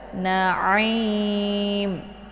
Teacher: Kalau dibaca im, itu keluarnya bukan dari tenggorokan tengah, melainkan dari jalur hidung.